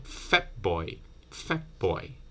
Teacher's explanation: your lips at the end of fat so instead of doing you close your lips but you don't do the burst you don't explode this displosive from closing your lips here you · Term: bilabial